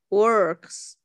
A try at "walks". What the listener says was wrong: No, ▁works. ▁你 又 回 去 ▁R ▁了 。W-A-L-K ▁绝 对 是 No, ▁没 有 ▁R, ▁注 意 听 ， 没 有 ▁R, ▁不 卷 舌 。Walk.